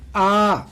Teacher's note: विवृत का मतलब है कि मुख द्वार पूरा का पूरा खुलता है। जैसे कि आ, जब आप आ बोलेंगे, आप बोल के देखिए, आप उच्चारण करके देखिए, आप पाएंगे कि आपका मुंह पूरा का पूरा खुला हुआ है, तो वो हो जाते हैं विवृत में आ जाते हैं।